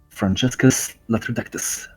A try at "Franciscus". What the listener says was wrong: No, it's because it's supposed to be pronounced with an S. It's not a ch sound, it's just an S sound.